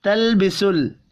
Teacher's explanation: لام ساکن پر قلقلہ نہیں کرنا